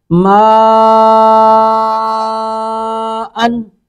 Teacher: آگے ما, میم زبر الف مد, مد پہ میم مد متصل ہے تو میم کو 3 الف کھینچیں گے کم از کم